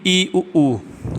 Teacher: मुख की आकृति जो है ना खुलती ज्यादा है ना बंद होती है मतलब लगभग बंद ही रहती है और हवा भी मुख से कम निकलती है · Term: संवृत स्वर